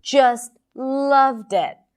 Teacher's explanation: So the word loved is longer, has more volume and higher in pitch.